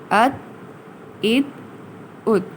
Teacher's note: اب یہاں دیکھیے میں نے ات نہیں کہا، یعنی تا کو میں نے نہیں ہلایا، بلکہ یہاں ات کہہ کر تا کو میں نے دبا لیا ہے منہ میں